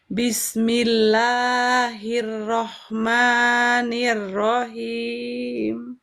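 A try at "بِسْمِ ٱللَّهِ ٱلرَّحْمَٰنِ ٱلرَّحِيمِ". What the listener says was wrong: Tadi soalnya Bunda madnya mad tabi'inya kepanjangan Bunda.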